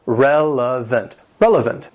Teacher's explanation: It has three syllables and the stress is on that first syllable.